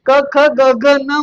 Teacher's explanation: कंठाला उच्चारून ते येतात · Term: कंठे वर्ण